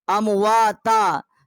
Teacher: امواتا، تا الف زبر تا، 1 الف جتنا جو ہے یہاں ہم نے آواز بلند کی ہے، کیونکہ تا کے اوپر ڈبل زبریں ہیں، تو جب ہم نے وقف کیا ہے تو یہاں ایک زبر جو ہے حذف ہو گئی ہے